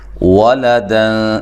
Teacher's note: لام کو باریک، واو کو ہونٹوں کو گول کرتے ہوئے، دن، یہاں نون تنوین کا اخفا مع الغنہ ہے، باریک اخفا ہے۔